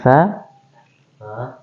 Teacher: lidahnya keluar sedikit, ujung lidah dia menempel pada ujung gigi seri atas.